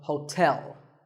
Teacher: There are 2 syllables, ho and tell, like the English word tell as in tell me. The stress is on the second syllable